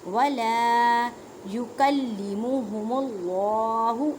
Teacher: اللہ کے لفظ کو پر پڑھیں گے